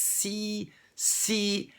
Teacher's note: You're hitting an I-type sound before you actually hit the I, so to speak.